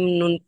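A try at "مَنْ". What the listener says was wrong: মিম নুন পেশ কোথায়? মিম নুন পেশ কোথায়? এটা তো জজম।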